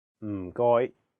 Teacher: The first character is in a very low tone, fourth tone. It sounds a bit like when someone is thinking about a plan and they say, Notice that there is no vowel in this syllable, so you have to really stress the sound.